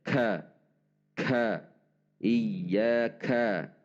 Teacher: Meskipun ada dorongan udara saat mengucapkannya, huruf kaf tidak didorong dengan kuat atau terkesan terlalu udaranya.